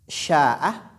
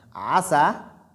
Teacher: Si par exemple, tu veux dire sha'a en arabe, shin, qui sort du milieu de la langue, qui est soulevé au niveau du palais, tu remplaces cette lettre shin par asin, qui sort de l'extrémité de la langue